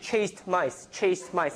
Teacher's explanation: it was kind of slow between chased and mice chased mice so I released the T